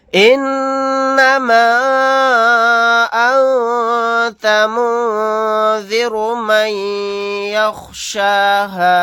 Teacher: الف مدہ کے بعد حمزہ دوسرے کلمے میں ہے الف کی شکل میں، یہاں پر مد منفصل کا قاعدہ ہوگا، اس مد کو 3 الف کی مقدار کھینچیں گے · نون کے اوپر تشدید ہے، یہاں پر غنہ کر کے پڑھیں گے